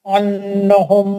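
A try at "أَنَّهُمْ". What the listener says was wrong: आपको जहाँ गुन्ना नहीं वहाँ गुन्ना पकड़ने का क्या शौक हो रहा है भाई? अन्नहुम में गुन्ना नहीं है. अन्नहुम में गुन्ना नहीं है वहाँ. जी, आप कर रहे हैं.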